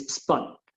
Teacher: Y que tampoco es spot, que esa es otra diferencia, es spot. Es como una O mezclada con una A. Es un sonido que obviamente en el español no tenemos, entonces hay que practicarlo para poder decirlo de esa manera, ¿no? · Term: O medio abierta